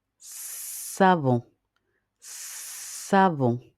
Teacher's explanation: Vous mettez votre main sur votre gorge lorsque vous prononcez le son et observez ce qui se passe au niveau de votre gorge. Remarquez que vous n'avez pas de vibration au niveau de la gorge. Par contre, vous entendez un sifflement qui est le ça peut ressembler au sifflement d'un serpent.